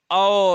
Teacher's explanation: गला का भी यूज हो रहा है आपको, ओष्ठ का भी होता है, ठीक है, ओ, ठीक, ओठ भी बन रहे होंगे। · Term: कंठ्योष्ठ